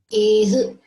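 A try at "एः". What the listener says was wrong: not ehe. Ehe. Sound will be ehe, not ehe. When you say ehe, you are bringing some other sound. H. Ehe goes ehe, right? Not ehe. Sorry, not ehi, ehu. Ehe, aihi.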